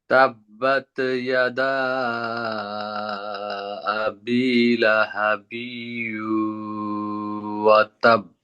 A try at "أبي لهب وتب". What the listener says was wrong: লাহাবি টান দিয়ে দেন আপনি, বিউ এর মধ্যে টান দিবেন। লাহাবিউ ওয়াতাব।